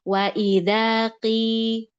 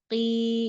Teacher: Wa idza qi, tetap dijelasin. Selain dia tebal, dia kasroh, turunkan rahang mulutnya. Rahang mulut turun, tengah lidah turun. Qi, ya harus dapat feeling menurunkan tengah lidahnya juga. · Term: tafkhim nisbi